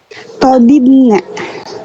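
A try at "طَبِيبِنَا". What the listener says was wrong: Masa tobibna? Kalau yang ini kan ya nunnya kan imbuhannya ya. Tadi sebelum ya harokatnya dibaca apa? Kasroh, berarti gimana bacanya? Tobibina. Berarti ada dua, bukan tobina, bukan ya.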